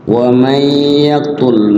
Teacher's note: nun mati ketemu ya jadi idgham bi gunnah ya, nunnya diidghamkan ke huruf gunnah. Huruf gunnahnya adalah ya.